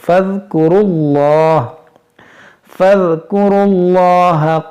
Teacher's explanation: اس یہاں پر یہ واو الف یہ لام نہیں پڑھیں گے، اس کو را کو لام سے ملائیں گے